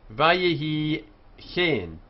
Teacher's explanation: Here we have the meteg, so we have secondary stress on the second syllable before the tone.